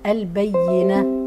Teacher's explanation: وما اجي عند البينه بظهر الهاء